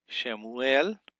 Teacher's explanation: some people say Shmuel, but really I like to pronunciate the Shava